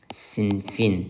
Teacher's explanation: Sinif sözü saitlə başlanan həm hal, həm də mənsubiyyət şəkilçisi qəbul etdiyi zaman söz kökündəki qapalı sait düşür